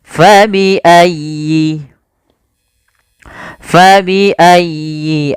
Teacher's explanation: Fa alirkan nafasnya. Ya tasydid ditekan dan dialirkan